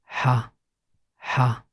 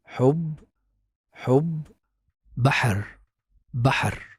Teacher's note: Also, its sound has no counterpart in English. You can say the sound easily by putting the back of the tongue close to the middle of the throat, but without touching. Just put it there and push the air and ha, ha.